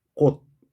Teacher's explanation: 치읓 받침이 디귿으로 났죠